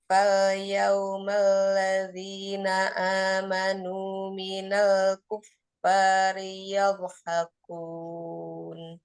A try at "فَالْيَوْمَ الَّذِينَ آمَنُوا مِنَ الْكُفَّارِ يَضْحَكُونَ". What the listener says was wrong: Tidak minal, dibuka rahangnya minal.